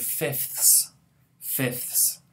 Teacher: we actually have three fricatives at the end of the coda